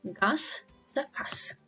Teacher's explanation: Z is pronounced as S